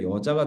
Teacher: 이 계집여가 말머리에 왔을 때 녀자라고 발음하지 않잖아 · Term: 두음 법칙